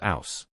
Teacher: its distinct way of dropping the H sound, so house becomes ouse